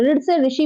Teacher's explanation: मूर्धन्य, मूर्धन्य र, जिसमें जीभ जो है ऊपर वाला, जीभ का आगे वाला जो नुकीला भाग होता है आगे वाला, ये तालु के मध्य में, तालु के मध्य में, ठीक है, छुए जाके जीभ मोड़ के पलट जाए, आगे वाली जो टिप है जीभ की वो तालु को छुए जाके और हल्की सी मुड़ के, तो वो होता है आपका मूर्धन्य